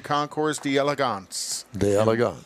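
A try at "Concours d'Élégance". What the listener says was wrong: I think it's Concours. Concours d'Elegance. Yeah, there's no hard S at the end, though. No hard S.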